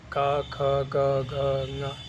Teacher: और क वर्ग जो है कंठ से बोला जाता है।